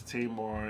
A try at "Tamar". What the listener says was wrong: You said Tamar. there's no Y in her name. Taymar is Tamar. Tamar, Tamar. Tamar. Tamar.